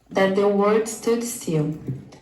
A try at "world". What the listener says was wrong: But again, you see the problem with that? In fact, the automatic subtitles have chosen the word. So what's a better pronunciation again? World. Try that. World. Yeah, so add a syllable.